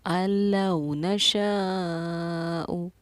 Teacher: 4 الف کے مقدار کے برابر ہم اس شین الف زبر شاہ کو کھینچیں گے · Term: مد واجب